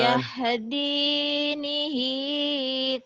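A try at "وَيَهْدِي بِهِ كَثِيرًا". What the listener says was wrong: wayahdini. Titiknya di bawah ya. Wayahdibihi.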